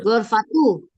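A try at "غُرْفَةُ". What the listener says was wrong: Gu, bukan go. Gu.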